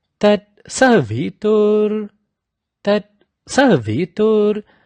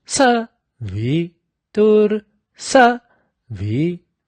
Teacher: Now in Savitur, the Sa is at a higher pitch, the V is in a lower pitch. So Savitur, Savitur.